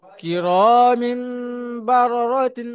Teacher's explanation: হ্যাঁ, তানবিনের পরে বা এসেছে, তাই মিমে, জি, তাই মিম তানবিনকে মিমের দ্বারাই পরিবর্তন তাই করে পড়তে হবে। তানবিনকে মিমের পরিবর্তন করে এক আলিফ পরিমাণ গুণনা করে পড়তে হবে। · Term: ইগলাব